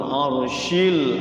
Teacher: arsy ada ra sukun juga tebal ya, tafkhim